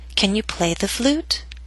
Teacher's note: down a little bit on play and then start rising up up up until the end of the question · With primary stress in the middle of these questions, remember that your voice must continue to rise until the very end. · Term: rising intonation